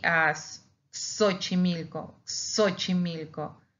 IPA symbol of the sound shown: ks